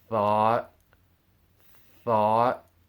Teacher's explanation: when you say thought in English, notice how your tongue, it's in between your teeth.